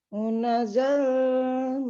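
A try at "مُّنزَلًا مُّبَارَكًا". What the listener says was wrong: Sukun, sukun. Nunnya sukun. Munza.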